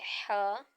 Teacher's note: हलक के दरमियान वाले हिस्से से अदा होगा और इसको भी एक सेकंड तक दराज किया जाएगा उसके बाद